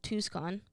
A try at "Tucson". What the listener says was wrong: You really pronounce that C in there. Tucson. Tucson. It's just Tucson.